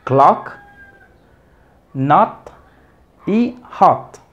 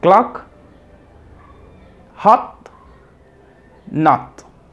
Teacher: acá tenemos la O, pero abierta. Es la que decimos la O con boca de A. Como en clock, not y hot.